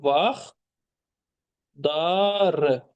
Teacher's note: Vaxtları sözündə L samiti tələffüz zamanı D-ya çevrilir. Yəni sonor samitlərin sayı azalır. Axı. L sonordu. · Deməli vaxtları sözündə t düşür. L da diyə çevrilir.